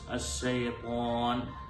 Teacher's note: അശ്ശൈത്വാൻ എന്നുള്ളത് ചുണ്ട് കൂടി ത്വ എന്ന് പറയേണ്ടതില്ല. എന്നാൽ നാവിന്റെ മധ്യഭാഗം മേലെ അണ്ണാക്കിനോട് ചേർന്ന് പ്രത്യേകം ശ്രദ്ധിച്ചുകൊണ്ടാണ് ത്വഇനെ ഉച്ചരിക്കേണ്ടത്.